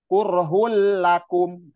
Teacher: ditekan aja, jangan ditahan karena bila gunnah, tanpa dengung. Jadi ditekan, nggak boleh kurhul lakum, itu nggak boleh.